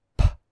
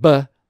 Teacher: Starting on the left side, we have bilabial, which means both lips. Sounds like p, which is voiceless, and b, which is voiced.